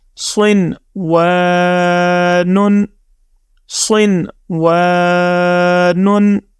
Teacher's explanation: یہاں آپ ایک اور بھی بات جو ہے مد نظر رکھیں کہ یہاں نون ساکن ہے، یعنی نون کے اوپر جزم ہے اور اس سے آگے واو ہے، تو یہاں پر ہم نے اخفا نہیں کرنا، مطلب غنہ کی طرح آواز اپنے ناک سے نہیں نکالنی